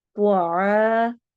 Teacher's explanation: त्वा को मोटा पढ़ना है, आ अलिफ मद्दा करनी है।